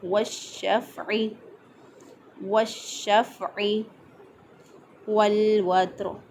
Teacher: فا پہ آواز کو بند کریں گے، قلقلہ نہیں کریں گے، آواز کو بند کر کے عین کو ادا کیا